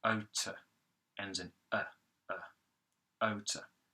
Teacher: You start off with otor, which is simply the O vowel, like in the word no, the T consonant, unvoiced, no vibration, using the tip of the tongue. You have the schwa vowel coming next.